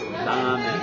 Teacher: The R sound in Japanese is really difficult because it's somewhat in between an R and an L in English. Yeah. The tip that I usually give people is when you're trying to say an R sound in Japanese, start as if you're going to say an R in English and then end with an L.